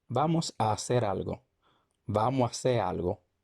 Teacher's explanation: cuando tenemos dos vocales iguales los dominicanos tendemos a reducirlas a una a hacer se convierte en hace vamos a hacer algo vamos